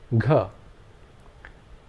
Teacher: Air is released with the sound, but this time the vocal cords are resonated.